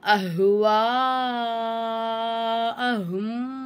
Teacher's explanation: வாவுக்கு மேல பெரிய மந்தி இருக்கறதுனால பெரிய மது நல்லா அஞ்சு அலிஃப்க்கு நீட்டிட்டு